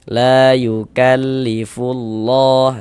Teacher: Nah, sehingganya lafaz Allah ini kita baca panjang. Mad thobi'i panjangnya dua harakat.